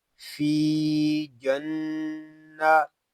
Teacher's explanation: جیم نون زبر جن، جیم کو نون کے ساتھ ملائیں گے کیونکہ نون مشدد ہے، اور نون مشدد کو ہم غنے کے ساتھ پڑھیں گے کیونکہ نون مشدد میں ہمیشہ غنہ ہوتا ہے